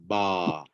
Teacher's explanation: Keluar bunyi dengan terpisahnya kedua-dua bibir dan rahang. Ba. Nampak? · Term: huruf ba yang berbaris fathah